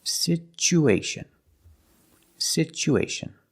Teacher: Because there's no stress on the U, we change the T to the ch sound.